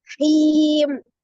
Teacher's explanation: Hi-nya adalah mad tabi'iyah, ada ya sukun sebelumnya kasroh di huruf ha. Hi dibaca 2 harakat mad tabi'i awalnya.